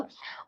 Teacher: मूर्धन्य अल्पप्राण घोष व्यंजन वर्ण का उदाहरण है